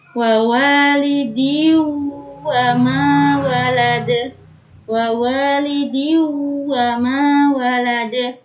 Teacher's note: dengan idgham bi gunnah, yaitu memasukkan dengan mendengung.